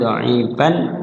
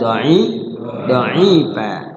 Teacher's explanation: Mat artinya dibaca panjang, iwat diganti tanwinnya. Jadi tanwinnya diganti dengan alif jadi panjang, yang seharusnya kana dha'ifan jadi kana dha'ifa. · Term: mat iwat lit tanwin